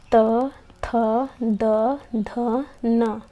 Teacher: दंत्य यानी कि दांत से जो वर्ण दांत पर जोर देकर बोले जाएं उन्हें दंत्य स्पर्शी व्यंजन कहते हैं